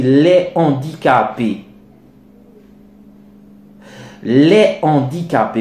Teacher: La liaison est dite interdite, c'est lorsque, par exemple, vous avez affaire à un H aspiré. Vous voyez que dans le mot suivant, le mot d'après, il y a un H aspiré.